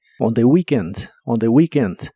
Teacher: Y usaremos la frase on the weekend, que significa el fin de semana o en fin de semana. La doble E de weekend se pronuncia como una I larga o doble.